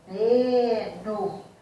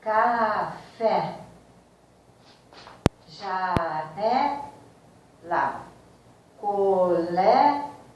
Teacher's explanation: parece que o ar ficou todo parado na cavidade interior do nariz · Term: sílaba tônica